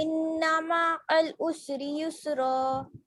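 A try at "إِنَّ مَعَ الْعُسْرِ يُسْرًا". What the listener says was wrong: जी अल को पूरा बोलिए ना, अल हल्का सा नहीं, पूरा बोलिए जो लिखा। इन्नमा अल उसरी युसरा। जी यहाँ पर आपने युसरन लिखा है, तो युसरा क्यों पढ़ा?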